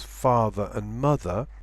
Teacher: in the word father there is no R sound